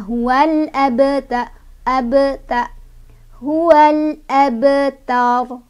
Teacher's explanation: Cara bacanya memantul tapi pantulannya kecil aja, nggak usah ditahan ya. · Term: qalqalah sugro